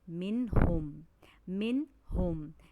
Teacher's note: یہ جو ہا ہے اسے ہمیں حلق سے ادا کرنا ہے